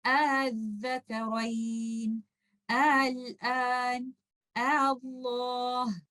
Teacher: So in this case, you will not change Hamzatul Wasl into a mad letter. Rather, you will pronounce Hamzatul Wasl with ease. This is in between Hamza and Alif. You will not stretch this Alif like a mad letter, and you will not recite this like a Hamza. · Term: tashil